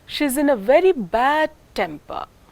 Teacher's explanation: the word temper is a two-syllabic word and it is the first syllable which is taking the pay pitch change · the most important word in this group is temper and this decides the shape of the tune